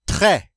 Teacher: The E with the accent grave is pronounced eh. The S, of course, is a final consonant. We do not pronounce it, so this word is pronounced très.